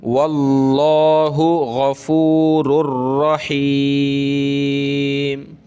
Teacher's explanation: اس را کو سخت کریں گے تشدید کی وجہ سے